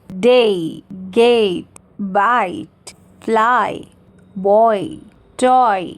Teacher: जो first part होता है वो स्ट्रॉन्गर और लॉन्गर होता है, और जो सेकेंड पार्ट होता है वो वीकर और शॉर्टर होता है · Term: फॉलिंग डिप्थोंग्स